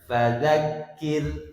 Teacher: Nah, karena termasuk tarpi dibaca tipis ya. Jangan membaca ro sukun itu memantul. · hadirin, ro di fadzakkir ditipiskan. Jadi ketika ro sukun fadakir dan mudzakir ee sederhananya mulut kita dalam keadaan senyum.